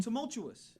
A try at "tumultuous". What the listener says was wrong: You guys were putting an R in there.